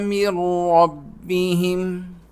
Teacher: میم کو ہم را کے ساتھ ملائیں گے۔